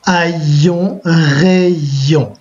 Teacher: j'entends un seul son nasal, le son on, d'accord?